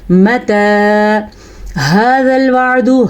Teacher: ہا کے تلفظ کا دھیان دیں، ہا چھاتی سے نکلے گا